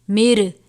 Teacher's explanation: نون ساکن کے بعد را ہے تو ہم اس کو غنہ کر کے نہیں پڑھیں گے بلکہ نون کو ہم را سے ملا دیں گے. مر، من نہیں مر پڑھیں گے.